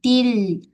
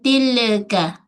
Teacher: Okey, jaga sifat tawasud lam. Alih sikit suara tahan.